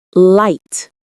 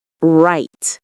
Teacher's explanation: The L sound is made with the tongue tip touching the roof of your mouth behind your front teeth. The R sound, as mentioned earlier, involves curling the tongue back without touching anywhere. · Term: L and R